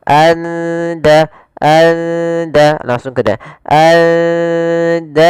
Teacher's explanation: Maka lafal nunnya kita samarkan ke dal. Karena di sini kita baca samar di antara izhar dan idgham. Maka suara nunnya samarkan ke da. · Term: ikhfa hakiki